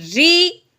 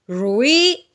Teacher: رو کے نیچے زیر ہے، رو زیر والی ہمیشہ باریک پڑی جاتی ہے